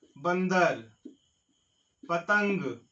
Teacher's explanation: अनुस्वार का उच्चारण नाक से किया जाता है